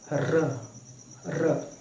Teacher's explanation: लुढ़क रही है। र यानी कि तालुओं को छू रही है। फिर छट से नीचे आ रही है। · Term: लुंठित वर्ण